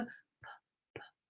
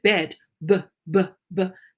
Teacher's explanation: it's an unvoiced sound. My vocal cord does not vibrate. But when I say bed, BBB, it vibrates. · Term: voiced and unvoiced